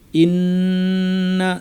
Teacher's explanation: নুনের উপর তাজদিদ লম্বা গুন্না। কিন্তু আমরা এর পরে টানবো না। গুন্নাটা লম্বা করব।